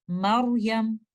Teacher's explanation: आप रॉ को हैवी करेंगे, मरयम। आप अपनी बैक ऑफ द टंग को ऊपर लेके जाएंगे लेटर रॉ को हैवी करने के लिए। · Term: तफ़ख़ीम